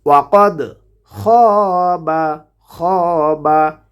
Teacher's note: খ হরফটিকে উচ্চারণ করতে হবে কণ্ঠনালীর শেষ ভাগ হতে।